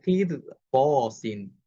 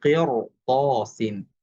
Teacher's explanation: র সাকিন পূর্বে জের হওয়া সত্ত্বেও এই রটা মোটা করে উচ্চারণ করতে হবে, কারণ পরবর্তী লেটারটা হচ্ছে মোটা হরফ।